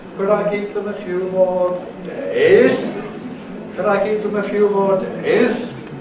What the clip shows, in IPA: ˈcould I keep them a few more ∕_days_?